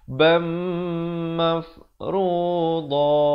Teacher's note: Tanwin bertemu mim, idgham bi gunnah 2 harakat dengung.